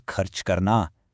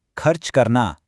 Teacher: Notice that kharch sound? It comes right from the back of the throat.